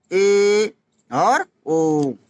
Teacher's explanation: अर्धविवृत में क्या है कि मुख द्वार अध खुला